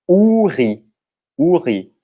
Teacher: Lembrando que a sílaba forte nas palavras em francês são a última, a sílaba tônica é sempre a última, então em português a gente fala uris, né, o U é forte, mas em francês aquele I vai ser forte no final.